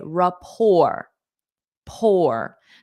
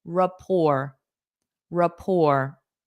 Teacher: notice the t is silent